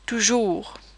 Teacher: It's very rounded. It's not like the English double O sound. It's not OO, it's OO, as in toujours. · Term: OO sound